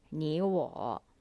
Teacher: we pronounce the first character 你 as the second tone because the second character 我 is of the third tone as well